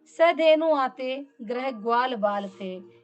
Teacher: इसका अगला उदाहरण देखिए, सधेनु आते ग्रह ग्वाल बाल थे, यहाँ पर ग्रह और ग्वाल ये जो ग शब्द है ये शब्द जो है कंठ से बोले जाने वाले हैं,